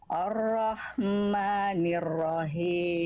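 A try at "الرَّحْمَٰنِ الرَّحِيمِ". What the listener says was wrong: Nah, himnya kurang. H kecil kasrohnya harus sama kadar berbisiknya dengan H kecil sukunnya. Ar-Rahmanir-Rahim.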